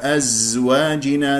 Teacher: زاي صفير ويجري فيها الصوت ولا يجري فيها نفس